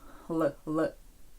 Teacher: Коли ми українською кажемо л, то у нас язик переважно десь між зубами л. Л л або торкається задньої частини верхніх зубів л.